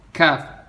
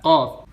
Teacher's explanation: Kaf atasnya sedikit dari qaf.